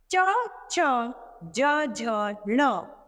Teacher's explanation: इनका उच्चारण हम तालु के द्वारा करते हैं।